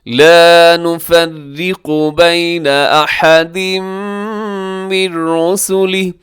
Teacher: را باریک ہے، قاف موٹا رکھیے گا